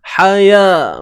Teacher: Baik, huruf ha pedas. Ni tengah kerongkong kita sempitkan.